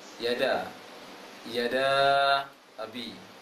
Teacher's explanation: Da-nya panjang sedang, panjang 4 rakaat. Yada abi. 4 rakaat, berarti 2 kali dari 2 rakaat tadi.